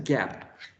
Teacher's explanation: G, plosive, velar, and voiced.